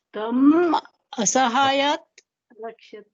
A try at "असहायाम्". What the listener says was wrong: Asahayam. Asahayat takaraha nasti. Asahayam arakshat. So saha on visarga lopa you missed. Saha tam asahayam arakshat. Tam asahayam simple samyoga. Asahayam arakshat, again it is